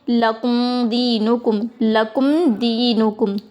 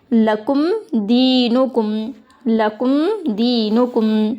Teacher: میم کو بلا گناہ کے جلدی پڑھیں گے